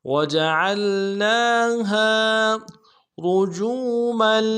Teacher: را کو موٹا ادا کرنا ہے، جیم کو واو کے ساتھ ملانا ہے، واو مدہ ایک الف دال میں کھینچیں گے۔ میم کی تنوین کو آگے لام کے ساتھ ملانا ہے، لام کے اوپر تشدید زور دیں گے۔